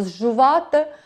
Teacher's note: в нас подовжується, виходить довгий «ж»